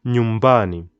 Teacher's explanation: you can hear my emphasis is on the mba